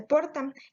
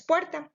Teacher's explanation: la O tónica o diptonga, que la regla menciona que se va a convertir en UE